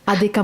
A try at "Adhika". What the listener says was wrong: Adhika. The H is actually silent.